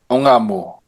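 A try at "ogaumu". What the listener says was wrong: Ongaumu. Remember, always separate. You gotta pronounce every single vowel. You don't slur them together. So this is ongaumu.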